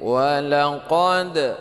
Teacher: qalqalah sughra sedikit aja pantulnya ya